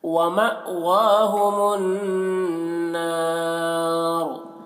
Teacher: نون مشدد ہے، نون میں غنہ ہوگا · الف مدہ کے بعد وقف کی وجہ سے را کا پیش سکون سے بدل جا رہا ہے، تو یہاں پر بھی مد عارض وقفی ہوگا، اس میں طول توسط قصر تینوں جائز ہے اور را کو پر پڑھیں گے۔